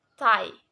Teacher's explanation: T and D both are alveolar stop sound, which were produced when the tongue tip contacts the alveolar ridge or the gums just behind the teeth, in a way closing the speech organs, both oral and nasal cavity, that the air streams is blocked.